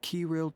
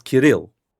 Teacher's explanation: You put the enunciation on the second syllable, not the first.